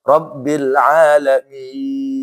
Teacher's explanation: mimnya gunah, ya-nya jangan gunah